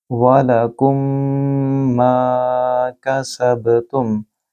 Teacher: यहाँ मीम साकिन के बाद मीम है, लिहाजा इदगाम शफ़वी होगा, गुन्ना करेंगे और बा जो कि उसके ऊपर सकून का साइन है, जज़म की अलामत है, यहाँ कलकला करेंगे, ब इस तरह पढ़ेंगे।